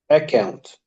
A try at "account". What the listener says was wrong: Too much students say account. Don't stress the k sound because you have to say account, not account. no stress on K, on the double C, which is K. Be careful of the vowel and consonant letters.